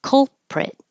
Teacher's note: you're making the uh K with the back of your tongue at the same time you're making the L in the front so hold your tongue in the K POS the L position